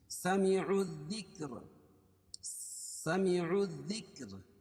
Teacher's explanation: تو یہاں حروف شمسیہ بھی ہے، کیونکہ الف لام کے بعد حروف شمسی کے 14 حرفوں میں سے ذال ہے، تو عین کو ڈائریکٹ ذال میں ملائیں گے، یہاں لام نہیں پڑی جائے گی. سمعوا الذکر، سمعوا الذکر، اور را باریک ہوگی کیونکہ را ساکن ما قبل ساکن اور اس سے پہلے زیر.